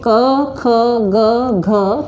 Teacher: कंठ से बोला जाता है